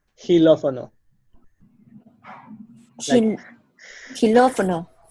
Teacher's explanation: With a hissing sound in the beginning, very soft.